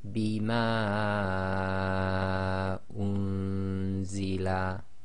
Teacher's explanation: Okay, so the ma is four long